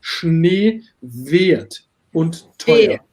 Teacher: You have not wert, it's wert, like close E, like in Schnee